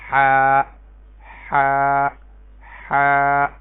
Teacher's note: یہ وسط حلق سے ادا ہوتی ہے یعنی گلے کے درمیان سے